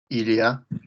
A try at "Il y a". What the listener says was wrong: Nice. Nice. Nice. Good.